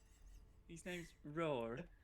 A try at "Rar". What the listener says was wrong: Rar. No, you're not pronouncing it right. You need to accentuate the A. It's Rar. It's Rar.